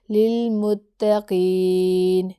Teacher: اب جیسے اگزامپل ہے ہدل للمتقین، ہدل، ٹھیک ہے، یہ دال کو لام سے ملایا لیکن غنہ کے بغیر۔ متقین، قاف موٹا ہے اور یا مدہ ہو رہی ہے، نون ساکن کو وقف کی صورت میں ڈراپ کر دیں گے